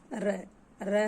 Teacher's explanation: हमारी जीभ में 2-3 बार इसमें कंपन होती है, ध्वनि होती है, घर्षण होती है, इसलिए इसको लुंठित व्यंजन कहते हैं। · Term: प्रकंपित व्यंजन